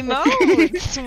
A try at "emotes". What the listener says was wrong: The accent goes over the E.